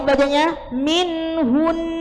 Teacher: ketika waqaf bacanya minhun, mendengung